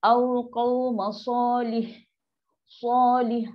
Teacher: Sod ni huruf tebal. Pangkal lidah naik. Qaf tebal. So dua huruf ni standby nak naik.